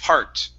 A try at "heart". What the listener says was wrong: You're saying hot. Okay, only with an ah sound. Curve your tongue up just a bit to pronounce the R.